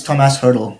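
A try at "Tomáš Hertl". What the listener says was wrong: Tom Ass. Tomash. Yeah, you said Tom Ass.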